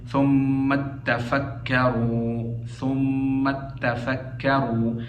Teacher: ثم تتفکروا میں تا کا جو ہے وہ تا میں ادغام پڑھیں گے